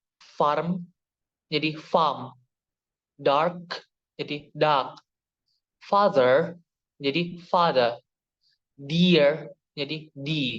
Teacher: bunyi r atau R ee itu tidak dibunyikan apabila dilanjutkan dengan konsonan atau ee berada di akhir ee sebuah kata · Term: delision kedua